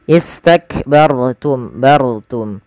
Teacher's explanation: atau dommah dia dibaca dengan tebal ketika ro sukun istakbartum bartum mim mati ketemu fa harus jelas karena izhar syafawi